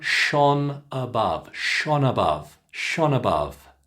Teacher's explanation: that ends with an N sound, a consonant, N. And then it goes into a schwa sound, above. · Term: connection